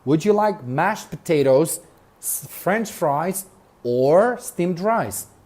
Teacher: notice the intonation rises and then falls in questions that ask a choice